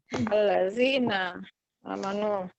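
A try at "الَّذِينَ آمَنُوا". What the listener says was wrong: Iya, betul.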